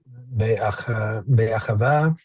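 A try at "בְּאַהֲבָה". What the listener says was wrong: All right, let's relax your tongue, the back of your tongue. Relax and relax the muscles in your throat as you pronounce hey. There should be zero friction.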